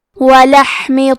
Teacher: کلمت ولحم میں حرف الحا ہے. حا کی ادائیگی حلق کے درمیان والے حصے سے ہے. کیونکہ یہاں حا ساکن ہے تو ہم یہ حرف کو ہمزے سے پڑھیں گے.